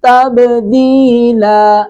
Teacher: تب با ساکن پہ قلقلہ کریں گے